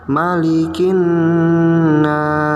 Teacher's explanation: bacaan ghunnah yaitu pada Nun tasydid yang diberi tanda warna kuning dibacanya didengungkan ya dan ditekan